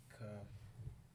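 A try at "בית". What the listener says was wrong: No, that's actually a B because it's got a little line at the bottom. Ba. Looks like it looks like a ka, but it's actually a B. Ba. Baya. Yeah, bayath. Bayath.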